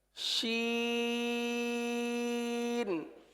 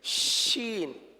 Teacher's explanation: اردو کے شین میں ساری آواز باہر نکل جاتی ہے، لیکن اس کے اندر منہ کے اندر بھی کچھ آواز رہتی ہے اور منہ کے اندر رہ کر پھر بات پھیل کر پھر باہر نکلتی ہے، جیسے شین.